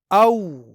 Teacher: हमजा जबर वाव सुकून औ। यहाँ ये वाव हरफे लीन है क्योंकि यहाँ जबर के बाद वाव साकिन है, यानी इस वाव को यहाँ नरमी के साथ पढ़ना है